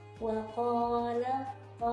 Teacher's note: posisi mulut kita ketika mengucapkan huruf ta di sini tidak tersenyum tetapi sudah membulat karena mengikuti ee huruf th